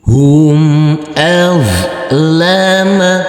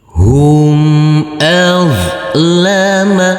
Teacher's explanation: Huruf zo yang bersukun ini tidak boleh dipantulkan karena ini bukan bacaan qalqalah.